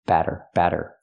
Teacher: make the fast D batter batter for the Double T